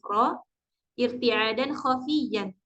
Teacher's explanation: sempitnya makj huruf ro yaetarnya ujung lidah ketika mengucapkan huruf Ro Jadi getarannya itu lembut atau ringan ya karena sempitnya Mak huruf jadi ee getarannya itu bukan yang terlalu